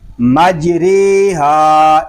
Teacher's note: آگے مجریہا، اس کے ہجے ہم اس طرح کریں گے میم جیم زبر مج، را امالہ والی رے، مجرے، ہا الف زبر ہا، مجریہا، جیم ساکن میں کلکلا، را امالہ والی، الف مدہ